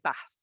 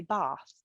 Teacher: somebody from the south might say bath. So you've got that AR sound in the middle that can be misconstrued.